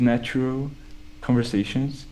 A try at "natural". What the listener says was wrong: natural instead of a o. I think I maybe heard a o or oo. Natural, and I would do o. Natural. Yeah, so it's different from an o.